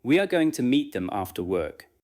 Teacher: Let going, meet, and after work carry the rhythm. Again, "We are going to meet them after work." Notice that the sentence can be smooth without being fast.